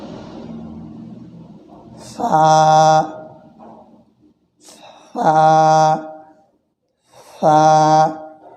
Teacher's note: জিহ্বার অগ্রভাগ সামনের উপরে দুই দাঁতের আগার সঙ্গে লাগিয়ে এটি উচ্চারিত হবে